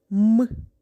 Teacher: він утворюється за допомогою голосу і шуму Отже це приголосний звук